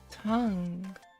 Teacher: The fourth tone is the falling tone. Let's start the fourth tone at a higher pitch, then let it drop sharply.